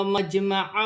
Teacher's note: جیم ساکن ہے، حرف قلقلہ میں سے ہے، قلقلہ کے ساتھ ادا کیا جائے گا